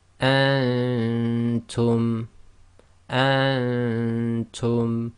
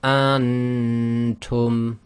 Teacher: The noon shouldn't be clear, and that's caused by keeping your tongue in the position of the next letter. Or if you find that very difficult, try to just make sure your tongue is away from the roof of your mouth, so it doesn't actually touch the roof of your mouth.